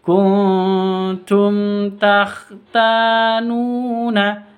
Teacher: pun juga berbeda kalau nun sukun bertemu dengan ta samar didengungkan kalau mim sukun bertemu dengan ta itu bacanya jelas tanpa dengung